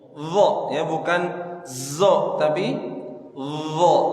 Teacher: ujung lidah menempel dua gigi seri atas sama seperti Huruf Dal bedanya kalau do punggung lidah menempel ke langit-langit